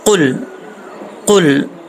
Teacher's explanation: क़ाफ 2 नुक्तों वाला है, इसको मोटा पढ़ा जाएगा।